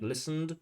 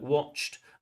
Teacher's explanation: Sometimes it's just a soft d, like listened. Sometimes it's a hard t, like watched.